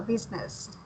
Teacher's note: For business is just your intonation or where to put your raising voice. It's at the first syllable